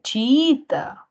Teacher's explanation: mayor fuerza de voz en la segunda I